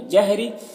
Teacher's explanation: रा के नीचे ज़ेर रा को बारीक पढ़ेंगे